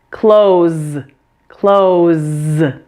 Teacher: the S at the end is voiced, right? You need to turn on your vocal cords here in your throat. So the S is pronounced as a Z.